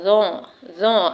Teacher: جب ہماری زبان کا سرا دانتوں کے درمیان آ جائے، یعنی اوپر اور نیچے کے دانتوں کے درمیان آئے گا، یعنی اس سے ٹکرائے گا تو ظا ادا ہوگا، ظا، ظا۔ آپ دیکھیے زبان کا سرا اوپر نیچے کے دانتوں کے بیچ میں آ جائے گا تو حروف ظا ادا ہوگا اور نرمی سے ادا ہوگا، ظا، ظا۔